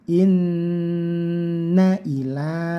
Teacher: lanya panjangnya 1 alif atau 2 harokat, ini karena ada fathah berdiri yaitu matobi'i.